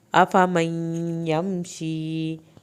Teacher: یا کی شد ادا کریں، یا ساکن کو کھینچ کے پڑھنا ہے